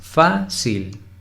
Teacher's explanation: no por ejemplo la palabra fácil fácil tiene dos sílabas fácil la sílaba tónica es la primera